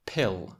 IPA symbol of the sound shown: p